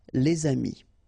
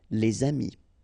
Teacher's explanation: If you've got a word after and then it's starting with a vowel like this one, amis, friends, then you should make the liaison